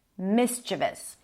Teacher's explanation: the stress is on the first syllable, mischievous.